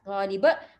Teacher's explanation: Ustazah tak baca lip ya. Jangan lekatkan lam tu dengan ba tu, jangan lekatkan dia. Li lain, li macam tu ya. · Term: qalqalah kubra